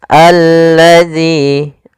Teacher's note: Alif lam syamsiyah adalah alif lam yang dia ditulis ada alif lamnya tapi dia tidak dibaca sehingga di sini langsung ke huruf lam